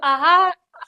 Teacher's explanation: कंठ से आपका कंठ से उच्चारण स्थान होता है विसर्ग का